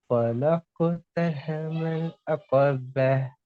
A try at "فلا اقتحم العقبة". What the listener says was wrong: அகப்ப என்று வரக்கூடாது. عقبة. فلا اقتحم العقبة. சவுண்டுக்கே தான் இந்த காப்பு வரணும். அகாப. அக்கா. அகாப.